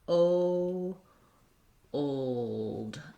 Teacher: And so breaking, if that's where your difficulty is in this word, you want to just notice that even though we just have the O, the ul, and the d, because it's a dark L at the end of the word, there is going to be a little bit of a gliding sound between my O and my dark L, because my dark L typically has a bit of a schwa there. · if I stretch it out, that O is a diphthong, and it's going to sound a little bit like O, old.